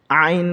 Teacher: আইনের উচ্চারণ হলকের মাঝখান থেকে শক্তভাবে উচ্চারণ হবে